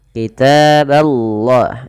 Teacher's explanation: ba-nya tipis, Allah-nya tebal.